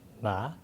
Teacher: with kind of a checkmark intonation